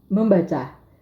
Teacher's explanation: membaca kata membaca terdiri dari morem yaitu dana dua morfem tersebut morfem nasal n pada morfem men mengalami perubahan sehingga men menjadi mem